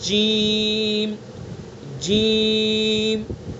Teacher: زبان کے بیچ کو اس کے مقابل اوپر کے تالو پر لگائیں گے